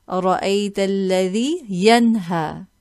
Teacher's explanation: We will pronounce the noon clearly, and it's known as Idhaar Halqi. In these examples, you see a fatha tanween followed by the hamza, and so we will read this tanween clearly.